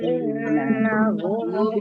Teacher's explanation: In nun tasdid dibaca gunnah, ditekan 2 harokat.